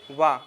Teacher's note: तो कौन कौन से, जैसे वाह का होता है, वाह, देखो बोल के देखिए अपने मुंह से वाह, तो इसमें दंत और ओष्ठ दोनों मिल रहे हैं, तो उसमें दंतोष्ठ होता है।